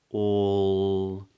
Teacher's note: the back of the tongue is raised for a dark L